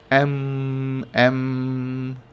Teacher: एम में हम अपने होठों को बंद कर लेते हैं और हवा को नाक से निकलने देते हैं और फिर उस पूरे हिस्से को वाइब्रेट करने देते हैं, जैसे एम एम।